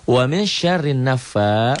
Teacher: fa-nya mad asli dibaca panjang satu alif